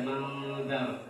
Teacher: ikhfa yang tipis, yaitu kita baca dengan ibtisam ya, dengan senyum kita membuka bibir kita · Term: ikhfa muraqqaq